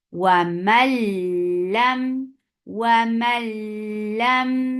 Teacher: Sorry, when you are giving idgham, you are making idgham without gunna.